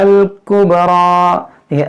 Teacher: با میں قلقلہ ہوگا، قبرى را کو پور کر پڑھیں گے